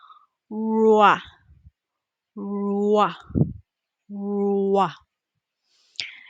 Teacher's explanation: To pronounce this consonant sound, the lips come forward like you are going to kiss, and the tongue goes back in the mouth. It does not touch anything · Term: American R